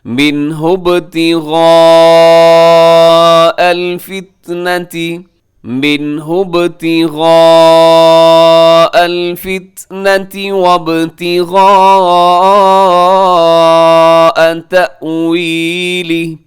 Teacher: جو مد ہے یہ مد متصل ہے، حروف مدہ حمزہ ایک لفظ میں 4 سیکنڈ تک لمبا کیجیے گا۔